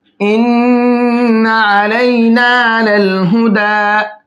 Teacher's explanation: ان کے نون کے اندر غنہ کر کے پڑھیں گے، یعنی کہ آواز کو ناک میں روک کر کے پڑھیں گے